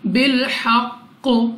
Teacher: زا کو ہم سختی سے ادا کریں گے، تا پر کھڑا زبر 2 سیکنڈ تک کھینچ کر پڑھنا ہے، اور قاف ہمارے پاس وقف میں ساکن ہو جائے گا، یہاں پہ ہم اس کو پڑھیں گے بالحق۔